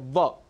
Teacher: दंतोष्ठ, जहाँ पर दांत और ओंठ बहुत ज़रूरी हों, वो उच्चारण, वो वर्ण है व।